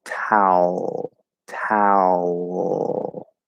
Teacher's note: we kind of get a bit of an L color on the ow.